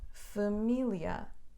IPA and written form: fɐˈmiljɐ (família)